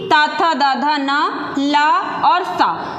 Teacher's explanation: इन वर्णों का उच्चारण दंत से होता है, इसलिए ये दंत वर्ण कहलाते हैं